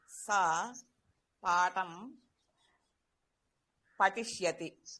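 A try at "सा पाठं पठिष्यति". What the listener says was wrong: ఉత్తమం.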